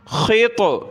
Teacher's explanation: طا کو موٹا کریں گے اور قلقلہ بھی ہوگا